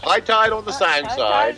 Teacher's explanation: that vowel of tide is back, so it sounds more like toy